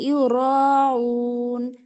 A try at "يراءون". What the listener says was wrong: আপু ইউরাউন র কিন্তু আলিফ টান.